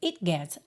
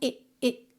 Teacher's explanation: o T do it some, né? Porque você mal tem tempo de colocar a língua no céu da boca.